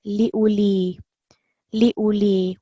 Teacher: We are just pronouncing the dhamma here for 1 second.